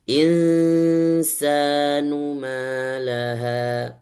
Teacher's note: Ketika baca nun sukun bertemu dengan sa, maka di-combine, digabung dua. Ada suara nun, ada suara sa dalam satu bacaan.